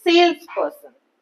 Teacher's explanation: sales part has more stress person part has less stress